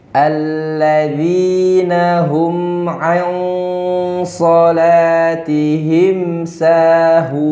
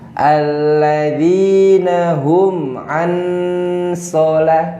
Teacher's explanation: Hurufnya berubah jadi eng, dibaca samar.